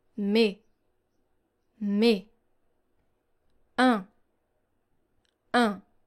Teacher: So here you don't hear the sound S and you don't hear the sound N. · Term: silent S